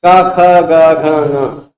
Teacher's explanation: पांचों का उच्चारण स्थान, क का भी कंठ, ख का भी कंठ, ङ का भी कंठ, ग का, घ का, ङ का, सबका उच्चारण स्थान कंठ, यानी उच्चारण स्थान तो तुल्य हो गया